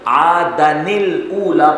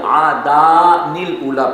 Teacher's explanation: اہل عرب جب بھی نون قطنی سے پہلے الف مدہ کو پاتے ہیں تو وہ الف کو حذف کرتے ہیں، لہٰذا یہاں پر عادن الاولی پڑھیں گے، نہ کہ عادان الاولی پڑھیں گے، ایسا نہیں پڑھیں گے۔